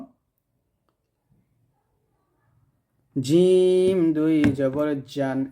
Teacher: জিহ্বার মধ্যখানটা আমরা উপরতলার সঙ্গে লাগাবো